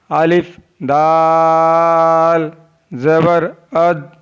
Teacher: दाल ज़बान की नोक और ऊपर के दांतों की जड़ से अदा होता है। दाल is pronounced from द tip of द tongue and द roots of द upper front teeth.